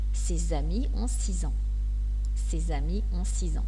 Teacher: Et vous devez savoir que les lettres S et X se prononcent « z » quand ils font la liaison.